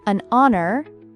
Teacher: The h in honor is silent